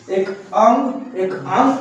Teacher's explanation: अ जो होता है उसको कंठ में रखा गया है और नासिका में अंग को रखा गया है। अंग को बोलेंगे हमारी नाक से प्रयोग करना पड़ता है। इसलिए इसे नासिका में रखा गया है। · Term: अयोगवाह